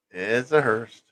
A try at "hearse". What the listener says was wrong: with a T. There's no T in hearse.